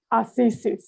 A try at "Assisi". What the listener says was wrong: No S at the end. Assisi.